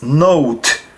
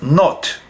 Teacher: note but in hebrew we would pronounce as not because uh ashkenazim also add a w sound to the o sound